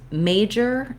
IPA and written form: ˈmeɪdʒər (MAJOR)